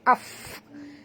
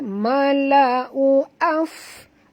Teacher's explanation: Fa di sini kita matikan dia, maka bunyikan hamas dia af. Ketap gigi atas ke bibir bawah dan keluarkan angin sikit saja angin dia